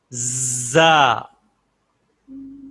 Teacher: جو زا کی صفت ہے وہ بہت ضروری ہے وسل جیسی ساؤنڈ پیدا کرنا، ورنہ زا جو ہے وہ زال سے کے ساتھ مل جائے گی نا، تو زال میں وسل نہیں، زا میں وسل ہوتی ہے۔ زا۔ زا وسل پیدا کریں، دانت بند کر کے زبان کی نوک اندر دانتوں کے ساتھ لگائیں اور زور سے ادا کریں، زا۔